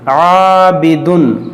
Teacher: الف سے پہلے عین باریک حرف ہے, تو اس الف کو باریک کریں گے